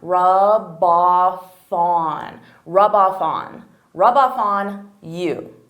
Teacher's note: saying those three words as one rub off on so here I'm taking the f from off and I'm adding it on on